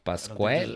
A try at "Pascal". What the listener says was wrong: don't think there's a U in there.